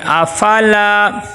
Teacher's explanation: لام کے آگے الف مدہ آ گیا، لام کو ایک الف کے برابر لمبا کریں گے